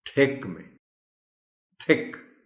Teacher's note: اب تھک بولتے ہوئے جب آپ تھ کہتے ہیں تو آپ کی زبان نیچے والے دانتوں کے باٹم کو ٹچ کر رہی ہے